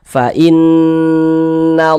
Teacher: Huruf lam jalalahnya ini dibaca tabkhim, dibaca tebal, sehingga ini dibaca fa innallah, seperti itu.